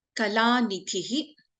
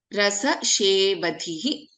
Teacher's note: In Rasashevadhihi we have Dha as the Mahaprana